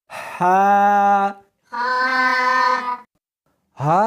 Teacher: اس کو حلق میں سے نکالنا ہے اور ساتھ میں ہوا بھی ہونی چاہیے۔ ہا نہیں پڑھنی بلکہ اس کو حلق میں سے نکالنا ہے، سینے میں سے نہیں نکالنا۔